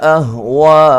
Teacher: حمزہ کو تحقیق سے پڑھنا ہے، اور وا پہ جو مد ہو رہی ہے یہ مد واجب ہے